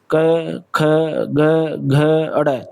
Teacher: कंठे, कंठे से बोले जाते हैं, कंठ का यूज, क, ख, ग, देखिए हाथ रख के देखिए यहाँ पे आपके कंठ के ऊपर, क, ख, ग, घ, अड़, थोड़ी थोड़ी ऐसे आपको पता चलेगा कि आपके कंठ का यूज हो रहा है।